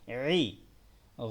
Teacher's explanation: হায়ের মতো গলার মধ্যভাগ থেকে উচ্চারণ হবে, ই হবে না, এই